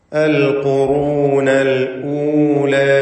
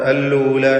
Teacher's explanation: ഹംസ ക്ലിയറാക്കി വ്യക്തമാക്കി ഉച്ചരിക്കണം